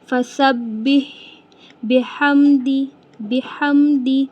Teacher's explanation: ہا حلق سے آواز نکالیں گے اور ہا کی آواز کلیئر بھی رکھیں گے